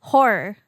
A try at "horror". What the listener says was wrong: You don't shape your mouth enough? Horror? You have to add the extra syllable. you're just Saying whore. YouTube will pick that up as whore when they put in the auto captions. Not horror.